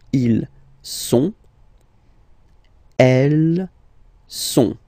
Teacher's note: Il, plural form. Okay, ils sont, final T not pronounced